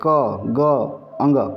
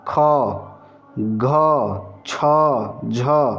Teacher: कम कम यहां पर प्राण डाला जा रहा है इसलिए अल्प प्राण और दूसरे और चौथे में ज्यादा प्राण डाला जा रहा है तो महाप्राण इनको कहेंगे दूसरे और चौथे ठीक बात है अब